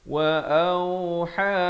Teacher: ha di pertengahan kerongkong ini.